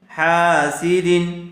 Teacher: تنوین کے بعد حروف حلقی میں سے حمزہ آیا ہوا ہے، اس لیے بغیر غننے کے جلد اظہار کر کے پڑھیں گے۔ اس قاعدے کو اچھی طرح سے یاد کر لیجئے، اچھی طرح سے سمجھ لیجئے کہ جہاں بھی قرآن کریم میں تنوین یا نون ساکن کے بعد حروف حلقی میں سے کوئی ایک حرف آ جائے تو وہاں بغیر غننے کے جلد اظہار کر کے پڑھیں گے۔